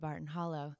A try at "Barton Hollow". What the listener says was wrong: No, you do not. No, it's a place on the Tennessee-Alabama state line, and it is properly pronounced Barton Holler. If you said Barton Hollow back where I'm from, they would stare at you and know that you're not a local.